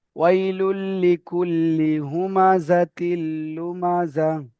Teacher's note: এই লি দুটো টান হয়ে যাচ্ছে, লি টান হবে না।